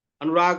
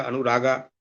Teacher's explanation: अनुराग अकारांत है तो उसको अपभ्रंश की प्रवृत्ति के कारण दीर्घ कर दिया